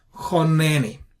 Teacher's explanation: Chon, neni. So since this is a closed syllable and it is an unaccented syllable, we treat it with a short vowel, which is qamats qatan, and therefore we pronounce choneni.